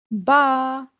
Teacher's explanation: दोनों होठों के तर हिस्से से बा अदा होता है